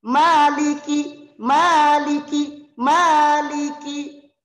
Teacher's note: karena aslinya Mad Thobi'i jadi dibaca Dua harokat